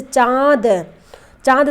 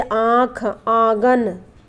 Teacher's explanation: अनुनासिक स्वर, जिसका उच्चारण नाक व मुंह दोनों से होता है।